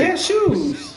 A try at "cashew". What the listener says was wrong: Why you dragging that shit like that? It's cashew. Like you sneeze, cashew.